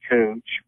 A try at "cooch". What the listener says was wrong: It sounded like he said coonch. With an N.